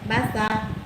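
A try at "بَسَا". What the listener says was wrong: Kalau dibaca basa, berarti panjang itu.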